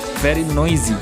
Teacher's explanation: very noisy dibaca dengan huruf S-nya dibaca dengan huruf Z